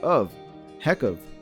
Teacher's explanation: the k sound at the end of heck links to of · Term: connected speech